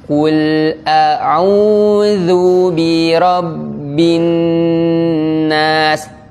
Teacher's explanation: Nun tasdid itu gunnah. Jadi kita tahan.